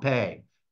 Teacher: And so jape is a Portuguese word that that explains the difference between the pronunciation that we see up there on the right, jape with an H, and the spelling, which starts with an R. And so in Portuguese, the R sounds like an English H